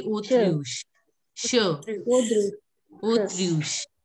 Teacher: CH will become sh. So it will be autruche.